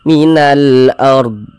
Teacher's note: Atau misalnya huruf rasukun sebelumnya di sini misalnya harokat dhammah, huruf rasukunnya dibaca tebal, baca tafkhim, sehingga pangkal lisan kita naik terangkat ke atas ketika kita mengucapkannya.